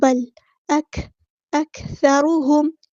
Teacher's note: بل اکثرهم لا یؤمنون، بل نہیں کرنا، بل اکثرهم، کاف میں ہمز کی صفت جو ہوگی ثا باریک نرمی سے، ثا میں بھی ہمز کی صفت ہوتی ہے، ثا ایئر فلو آتا ہے، ثانی ثا بہت نرمی سے ادا کرتے ہیں.